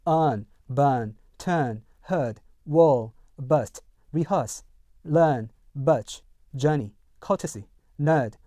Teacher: 그래서요, 7번 같은 경우요, 일반 미국 영어에서는요, earn, burn, turn, heard, were, burst, rehearse, learn, birch, journey, courtesy, nerd, thirsty 이렇게 발음하는 반면에요, 영국 영어에서는요, R 사운드, R 색채를 없애겠죠?